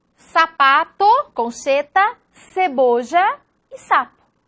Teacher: En la mayoría de dialectos, la S puede ser representada por S, C o Z. Y su pronunciación es dorsal, como la S del inglés.